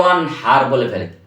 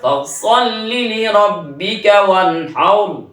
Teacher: এই সূরা কাউসারে তিনটা আয়াতের শেষের তিনটা র, অনেকে রগুলি মোটা করতে পারে না। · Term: র মোটা